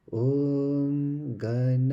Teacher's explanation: Notice? So we have low intonation, we have middle intonation, and we've got a Dirgha Swarita, a beautiful example of intonations in this one word.